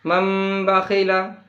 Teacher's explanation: آپ سن رہے ہیں کہ نون کی آواز نہیں آ رہی ہے، اس لیے کہ نون کو ہم نہیں پڑھتے ہیں